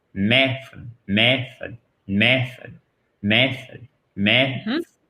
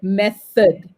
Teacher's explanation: le souffle de l'air va provoquer une espèce de mini sifflement entre les dents du haut et la langue